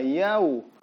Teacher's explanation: Dia berpindah dari huruf a ke u, yau.